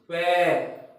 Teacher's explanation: फिर ये खुलेंगे और इनके बाद हवा रिलीज होगी, पैर। तो एक बार दोनों होठ नजदीक आके खुले, फिर हवा रिलीज हुई। इस तरह से इन सभी में, प्लोसिव में, क्लोजिंग स्टेट में माउथ ऑर्गन दोनों पास में आते हैं, फिर धीरे से हवा सडनली बाहर निकल जाती है।